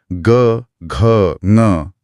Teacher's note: सघोष का अर्थ है गूंज या कंपन के साथ। जब इन वर्णों का उच्चारण होता है तो गले में एक स्पष्ट कंपन या बज महसूस होता है।